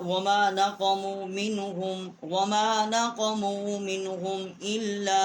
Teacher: یہاں پر ہم نے لام الف لا جو ہے چھوٹی مد ہے، 3 الف جتنا آواز یہاں بلند کی ہے